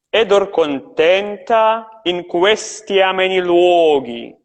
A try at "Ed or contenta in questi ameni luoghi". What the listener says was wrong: Yeah.